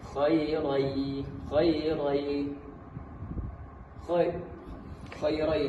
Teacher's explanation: Tanwin bertemu dengan huruf ya. Huruf idgham tersebut langsung masuk melebur ke huruf ya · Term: idgham alghunah